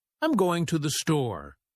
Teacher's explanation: We stress store because it's the key word.